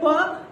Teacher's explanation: नहीं बोल पाएंगे। तो चूंकि ओठ की सहायता से प का उच्चारण होता है, इसलिए इसका उच्चारण स्थान ओष्ठ है